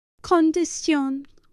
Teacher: So you don't have the shin in Spanish, but ción. Yes, CION. Like condition would be condición.